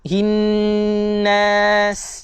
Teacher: Nun bersabdu. Dengung dua harakat.